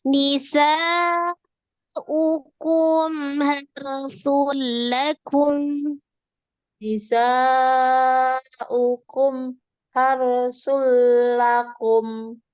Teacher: mimnya itu mengalir sebagian, tawasud atau bainiyah. Jangan dijedah, tapi dialirkan, disambungkan.